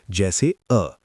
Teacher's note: मध्य स्वर जीभ का मध्य भाग थोड़ा सा ऊपर उठता है